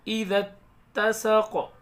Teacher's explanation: ذال کو ڈائریکٹ یہاں تا میں ملائیں گے